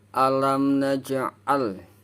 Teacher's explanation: Alam naj'al, lam sukun bertemu dengan huruf lam. Jadi suara lam sukunnya itu tidak terbaca, langsung masuk ke huruf lam. Ini termasuk golongan idgham.